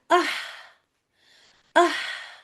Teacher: हम्स भी है यानी हवा भी है, बारीक भी है और हलक के दरमियानी हिस्से से निकल रहा है · اور یہ آہ آہ آپ دیکھ رہی ہیں ہمس بھی ہے یعنی ہوا بھی ہے، باریک بھی ہے اور حلق کے درمیانی حصے سے نکل رہا ہے اور ٹھنڈی ٹھنڈی ہوا آ رہی ہے، ٹھنڈی آواز ہے یہ. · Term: आइन